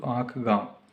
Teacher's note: अनुनासिक का उच्चारण नाक मुह दोनों से होता है